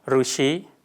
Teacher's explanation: It is articulated with a retroflex tongue posture where the tongue curls back toward the roof of the mouth. Although it resembles a consonant in form, it behaves entirely as a oval. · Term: vowel Ru